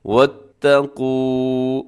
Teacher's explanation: واو پہ آپ کے ہونٹ جو ہے وہ گول ہو جائیں۔